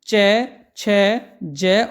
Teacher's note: उच्चारण में स्पर्श का समय अपेक्षाकृत अधिकृत अधिक होता है और उच्चारण के बाद वाला भाग संघर्षी हो जाता है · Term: स्पर्शी संघर्षी व्यंजन